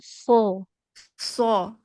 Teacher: huruf shad ini seharusnya walaupun kita belum bisa menebalkannya jadinya sin jangan sya